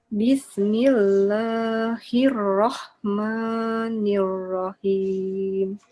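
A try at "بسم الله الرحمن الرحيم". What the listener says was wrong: Pendekkan lagi la sama maknya.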